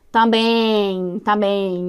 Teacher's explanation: É como se tivesse um E se encontrando com um I ali, como se tivesse também. Então, esse E, quando ele gera esse som nasal, ó, nasal é que sai pelo nariz, é como se tivesse um ditongo ali. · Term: ditongo nasal